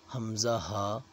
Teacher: حمزہ ہا جو ہے یہ حلق کا جو سینے کی طرف والا حصہ ہے، اس حصے سے ادا کیے جاتے ہیں۔ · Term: حروف حلقی